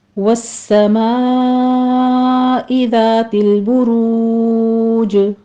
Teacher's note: वस में सीन को हम तशदीद है सख्ती के साथ अदा करेंगे, सीटी की आवाज़ आनी चाहिए यहाँ पर।